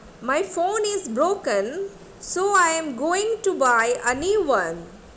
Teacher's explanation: Here I give stress on phone, broken, going, buy, new one